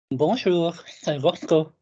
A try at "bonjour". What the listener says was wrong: Yes, or bonjour, not jure, bonjour.